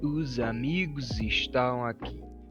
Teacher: you attach these Z sounds to the next word, not the actual word that contains the S